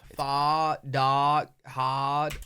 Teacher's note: It doesn't adhere to the same rhotic pattern that a lot of American English does, where you pronounce that final R.